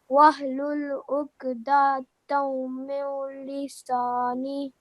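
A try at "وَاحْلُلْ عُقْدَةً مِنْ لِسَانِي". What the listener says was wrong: You don't make a nasal sound, you just make the meme sound, the meme mushaddad. Dammi, like this.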